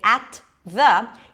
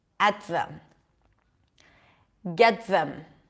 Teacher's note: when the T appears before a th then it's also a held sound